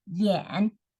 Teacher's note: the third tone so you go down first and then you go up so falling from first and then Rising tone yeah and yeah